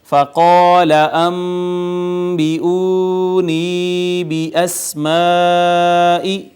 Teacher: فقال انبئونی باسماء، تو یہاں پہ یہ الف مدہ آ گیا، ما قبل مفتوح تھا اس کا، اس کے بعد نون ساکن کے بعد با آئی تو با حرف اقلاب ہے، اس نے ما قبل نون ساکن کو چھوٹی میم سے بدل دیا، اس کا اقلاب کر دیا۔